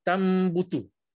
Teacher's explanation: Nun mati bertemu dengan ba. Ditukar terus, nun tu dah tak ada dah.